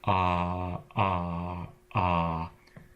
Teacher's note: stop is if you re articulate a vowel sound like ah that catch in your throat that stops the sound that is the glottal stop